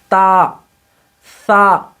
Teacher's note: دیکھ لیجئے، اوپر کے یہ جو دونوں دانت ہیں، ان دونوں دانتوں کو کہتے ہیں ثنایا علیہ۔ زبان کی نوک کو ثنایا علیہ کی جڑ میں، یعنی اوپر کے دو دانتوں کی جڑ میں لگا کر ہمیں کہنا ہے تا